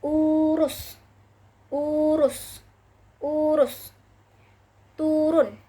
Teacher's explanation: U dengan tinggi bawah belakang dengan kondisi mulut semi tertutup menghasilkan kata urus, urus, urus, turun.